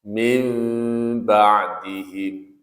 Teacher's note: Nun sakinah atau tanwin bertemu 'ba', bunyi nun sakinah atau tanwin digantikan oleh bunyi mim sakin, dibaca dengan senandung selama dua ketukan, yang disebut iqlab. · ikhfa syafawi dengan bibir tertutup. Karena bunyinya seperti ini, "min ba'him", "min ba'him".